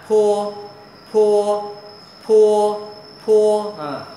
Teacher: cách đọc chữ P phở này môi ngậm môi lại nè. Bật hơi ra.